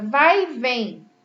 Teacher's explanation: E a palavra vai e vem termina com em e nós vamos usar o acento agudo porque é um som mais aberto